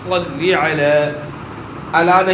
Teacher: صلی علی زیر کو مجہول نہیں پڑھنا، معروف ادا کرنا ہے، اور زیر کو کھینچنا بھی نہیں۔